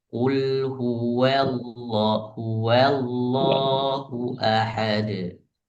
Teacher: wa-nya wa huruf tipis. Jadi wa-nya harus memang benar-benar jangan sampai jadi tebal karena lafaz jalalah yang di depannya.